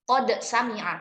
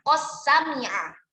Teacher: Ketika dibaca qad sami'a maka sinnya tidak ditasydid karena bacaannya izhar. Tapi ketika misalkan qad sami'a dibaca dengan idgham, maka membacanya qas sami'a